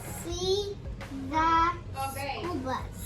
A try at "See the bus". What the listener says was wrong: No, school starts with an S. Do you see the word school in here somewhere? Bus.